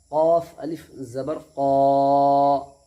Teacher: क़ाफ पूर हरफ है, समझे ना, तो मोटा करके पढ़ना है